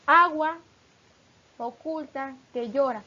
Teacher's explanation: Además, cuando una palabra termina en vocal y la siguiente empieza por vocal o por H, se produce una sinalefa. Con la sinalefa se pronuncian dos sílabas como una sola y por tanto se cuenta también como una.